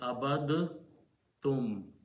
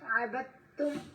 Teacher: But if there is another word in the Quran right after that, that has a letter ta, so when you combine these or read them without stopping, then the sound of dal goes away and you pronounce ta 2 times with a shadda · Almost none of us know this rule, and we just pronounce abad tum. It should be pronounced skipping the sound of the dal and replacing with the sound of ta. So ta becomes twice and it has to have a shadda on it.